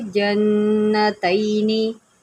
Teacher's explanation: यहाँ पर नून शदीद है, गुन्ना करे